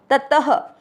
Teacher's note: विसर्ग को पढ़ना है ह